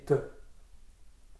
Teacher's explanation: quand on prononce le T, comme c'est une occlusive sourde, elle est nette et donc elle est resserrée sur elle-même. Elle n'est pas expansive. Et donc ça donne quelque chose de serré dans l'axe, ça fait T.